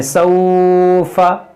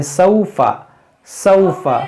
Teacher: देखिए बाज़ लोग इसको खींच देते हैं सौफा, तो खींचना नहीं है यहाँ पर, ये हुरूफ लीन है, ये वाव साकिन से पहले ज़बर है, ये हुरूफ लीन है, ये वाव लीन है। और वाव लीन को नरमी के साथ बगैर खींचे बगैर झटका दिए मारूफ पढ़ा जाता है